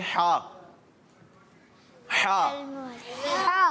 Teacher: حلق کے درمیان والے حصے سے ہا کی ادائیگی ہوگی